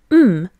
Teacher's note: it is called a bilabial nasal as both lips are closed for its articulation as air escapes through the nose it is also voiced remember you can check if a sound